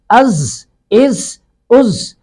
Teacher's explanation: زا پہ سٹی کی آواز آئے گی